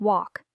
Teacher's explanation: The L is silent.